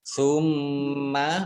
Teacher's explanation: mim tasdid dibaca gunnah atau mendengung, ditahan 2 harokat. Summa mim kasroh ya sukun mat tabi'i panjang 2 harokat.